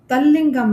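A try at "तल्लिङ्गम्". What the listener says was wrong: तत्लिंगम, ये तय बोला जाएगा यहाँ पर, तल नहीं बोला जाएगा।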